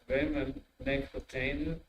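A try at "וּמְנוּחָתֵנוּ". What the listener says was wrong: Don't pronounce the second vowel, the end of a consonant. Bimnu Chasenu. Bim, not bimeh. Bim. Bimnu.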